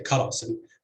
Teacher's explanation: with stress on the first syllable, even though the second syllable is open with a long vowel, and you would expect it to attract stress.